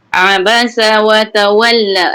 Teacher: Sebutan ain di pertengahan halqum.